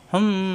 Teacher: এই মিম সাকিনের পরে আসছে বা, আমরা জানি মিম সাকিনের পরে বা আসলে এই মিমকে গুণ্য করে পড়তে হয়।